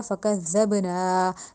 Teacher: زا یا زو کی ادائیگی بالکل نہیں دی جائے گی، فکذب، زال دانتوں کے درمیان زبان لا کے نرمی سے ادا کیا جائے گا ، فکذبنا، اب نون کے بعد پھر الف مد آ گیا،